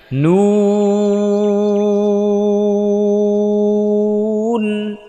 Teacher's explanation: নুন বলার সময় ঠোঁটটা রাউন্ড করতে হবে, গোল করে দিতে হবে, একেবারে চোকা করে একেবারে সামনে, যত সামনে আনতে পারেন সামনে নিয়ে আসবেন।